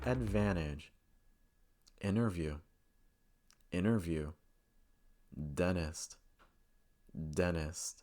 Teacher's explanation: the letter n followed by the letter T and the T goes silent this usually occurs when the letter T is not stressed so